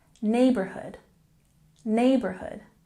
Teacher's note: emphasize the first part of the word neighborhood